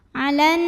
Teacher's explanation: Cara membacanya dengung, bunyi n-nya tahan kurang lebih 2 harokat. · Alif lamnya namanya alif lam syamsiyah karena alif lam menghadapi huruf syamsiyah yaitu nun. Maka alif lamnya jangan dibaca, diidghamkan atau dimasukkan langsung ke nun berikutnya. Alan. Nunnya gunnah musyaddadah karena nun bertasydid.